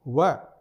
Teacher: जो व है उसका भी उच्चारण दंत प्लस ओष्ठ से होता है, दोनों का समायोजन होता है। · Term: दंतोष्टम